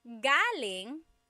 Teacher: galing, the emphasis is on the first syllable. That means coming from.